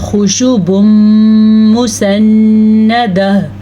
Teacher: نون پہ شد آنے کی وجہ سے غنہ ہو گیا، پھر یہاں پہ ادغام بالغنہ کا قاعدہ ہو گیا۔